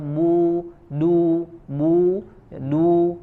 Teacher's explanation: ba dari syafatan ya, dari dua bibir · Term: huruf ba